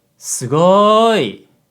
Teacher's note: the word sugoi has a low high low pitch pattern but in reality with sugoi the first syllable is actually lower · sugoi has a low high low pitch pattern but in reality with sugoi the first syllable is actually lower than the third syllable